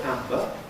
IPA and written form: ˈæmbə (amber)